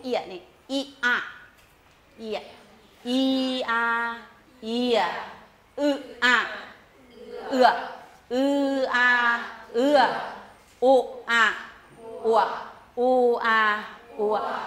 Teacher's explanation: เปลี่ยนระดับของลิ้นจากระดับสูงมาระดับต่ำอย่างเร็ว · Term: สระประสม